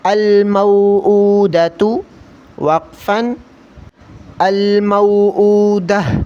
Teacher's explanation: الٹا پیش میں تھوڑا کھینچ کر پڑھیں گے ہونٹوں کو گول کر کے، اور آخر میں گول تا ہے تو وقفاً کی صورت میں ہا پڑھیں گے، الموعودۃ، وقفاً، الموعودہ۔